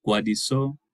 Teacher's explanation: we have this negative value of negative 147 milliseconds meaning prevoicing lead vot